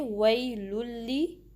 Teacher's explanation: تو verse number 1 میں آپ دیکھ سکتے ہیں کہ یہاں پر وَيْلٌ لِّكُلِّ میں لام کی جو دو پیش ہے یہ ضمتین، وہ تنوین ہے، اور اس کے بعد یرملون میں سے لام آیا ہے تو ہم لام کو دوسرے لام سے ملا کر پڑھیں گے نا، ایک ساتھ مشدد ادا ہوگا، تو اس کو ہم پڑھیں گے وَيْلٌ، اس طریقے سے۔ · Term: ادغام